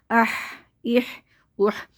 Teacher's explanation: ہا کی آواز جو ہوا کے شور کی طرح نکلنی چاہیے